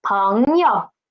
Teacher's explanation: It is 朋 yo, and yo is neutral tone. Neutral tone. We need to read it soft and quick.